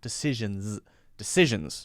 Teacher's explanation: that last S in decision is actually a Z sound.